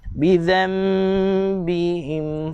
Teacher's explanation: Dengung dia dengan cara bibir dirapatkan. tapi bersentuhan secara ringan sahaja. Bibir dengan bibir kita tu bersentuhan secara ringan sahaja. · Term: hukum iklab